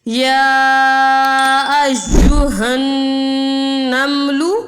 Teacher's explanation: ہا، نون زبر ہن، یا ایہن، یہاں پہ نون مشدد ہے تو ہم یہاں پہ غنہ کریں گے، یعنی ناک میں آواز لے جا کر پڑھیں گے